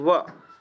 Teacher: व को हम दंत ओष्ठ दोनों बोलते हैं, यानी कि दांत और ओंठ दोनों से ही स्टार्ट होता है, दंत ओष्ठ व, है ना।